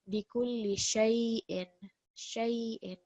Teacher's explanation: because sheen is carrying fatha joined to ya sakin, this is soft lean. We are elongating that sound for 2 seconds. Bikulli shay'in, shay'in, soft blend of the sheen over the ya.